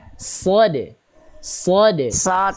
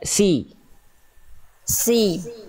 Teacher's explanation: pangkal lidah diangkat, dia huruf tebal